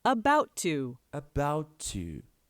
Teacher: of a about and the T from the preposition to but you usually only say one t sound because they melt together